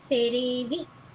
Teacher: the L in televi gets converted to R. So it becomes terevi.